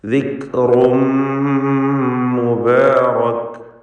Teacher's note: റായിൻ്റെ തൻവീനിന് ശേഷമുള്ള മീമിൽ പൂർണ്ണമായും ലയിപ്പിച്ച് മണിക്കണം. ഇദ്ഗാം ബിഗുന്ന കാമിൽ.